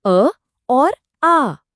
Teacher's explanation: अ की आवाज छोटी और जल्दी खत्म हो जाती है और आ के लिए मुंह थोड़ा ज्यादा खुलता है और आवाज लंबी होती है।